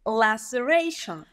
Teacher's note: your secondary stress is sounding really good, it's right in the middle